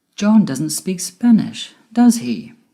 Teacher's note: my voice went down at the end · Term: falling intonation